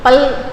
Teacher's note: பல் அப்படின்னா நம்முடைய நுனிநாக்கு போய் பல் அப்படின்னு சொல்லும்போது அந்த பல் வரிசையில் அங்கே வந்து ஒற்றணும். அப்படி இப்படி ஒற்றி எடுத்தால் போதும், அதான் இல்லை.